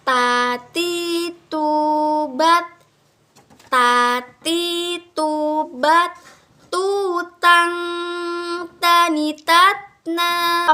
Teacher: cara melafalkan huruf ta itu, mengeluarkan huruf ta itu, ujung lidah kita itu bertemu dengan dinding gigi seri bagian atas.